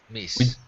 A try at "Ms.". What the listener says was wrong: MS is Ms. with a Z sound. Ms.